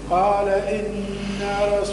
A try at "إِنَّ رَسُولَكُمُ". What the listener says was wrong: ما قلش إنا رسولكم، أنا عملت غنة وزدت ألف بعد النون، خطأ. قال إن رسولكم،